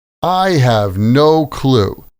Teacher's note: The stress is on the word no.